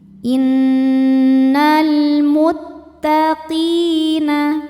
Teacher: Sebab alif lam menghadapi huruf qamariah yaitu mim. Cara bacanya lam dibaca dengan jelas disebut dengan izhar qamari.